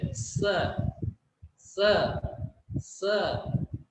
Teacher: दंत स को बोलते हैं दंत स जो हमारा है उसम जिवा हमारी दांत से स्पर्श करती है स स स इस तरह से आवाज होती है तो हमें